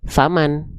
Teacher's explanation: Nun sukun, karena sukun dia dibacanya enggak naninu, tapi dibunyikan dengan bunyi mati dari huruf nun.